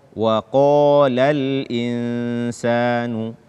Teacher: Sempurnakan ketebalan qaf tersebut, apalagi ketika dia berbaris fathah dan setelahnya alif. Kesalahan kedua pada ayat ketiga ini, tidak menyamarkan atau tidak mengikhfakan nun sukun pada kata al-insan.